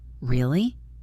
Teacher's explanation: If I say really, rising, I'm asking a question, showing surprise.